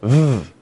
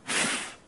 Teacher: The only difference comes in the fact that our f sound is unvoiced. Again, that requires no vibration in our vocal cords to be made.